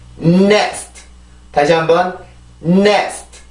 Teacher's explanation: N 발음의 순수 소리인 콧소리를 준비 동작으로 해서 내가 강세로 이렇게 올라가 주면 돼요. 그래서 이게 강세가 그냥 네스트 이런 게 아니니까 네스트를 해주기 위해서 코에서 강한 발음이 나오면서 그러고 나서 이렇게 올라가 주면 되는 겁니다.